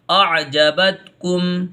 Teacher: यहाँ पहले हमज़ा की आवाज़ निकालिए, फिर आइन की आवाज़,